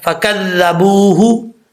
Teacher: ذال جو ہے بغیر سیٹی کے ساتھ پڑھا جائے گا